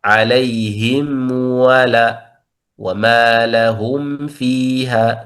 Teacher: لا يخفي الميم عند الحروف الواو أو الفاء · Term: بالإظهار